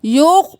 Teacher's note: जीम को कलकला करें, आवाज़ पलट के वापस आए